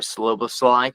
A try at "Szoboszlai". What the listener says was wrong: It's the start of it, because he's not slow. Okay, think of somebody weeping. He sobs. Okay, he Szoboszlai.